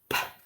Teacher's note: So really, you're using air to make the sound. Okay, you're not using your voice box, you're just using air. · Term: unvoiced